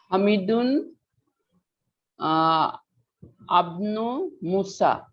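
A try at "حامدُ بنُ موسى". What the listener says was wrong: ইবনু, ইবনু, ইবনুর আলিফটা হচ্ছে হামজাতুল ওয়াসাল, এই কারণে মিলাই পড়তে হবে।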